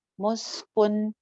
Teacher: سین پہ آواز چل رہی ہے، سٹی بھی ہے. کن کے اوپر میں غنہ نہیں کر رہی.